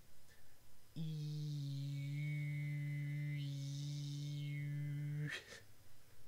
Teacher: I'm going to start with unrounded lips and then I'm going to round them without moving my tongue.